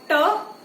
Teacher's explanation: जब आप ट बोलोगे तो जीभ एकदम ऊपर लगेगी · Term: मूर्धा